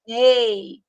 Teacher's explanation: Ei, sai pela boca. Então, não é decrescente nasal, é oral.